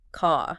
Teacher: Unless uh the next word starts with a vowel sound. So car becomes more like ca just the long vowel. · in a lot of British English especially say received pronunciation that final R or an R before a consonant often just disappears goes silent